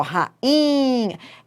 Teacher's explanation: Então, rainha, o I tinha tudo para receber acento. É segunda vogal do hiato, é tônico, ó, rainha, é a vogal que manda na palavra, mas não recebe acento por causa do NH.